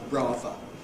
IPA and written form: ˈbrɑːvə (Brava)